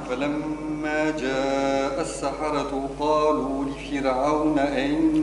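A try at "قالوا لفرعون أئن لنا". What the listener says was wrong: لا جيب الهمزة الأولى. شوف آئن لنا. آئن لنا الهمزة الأولى.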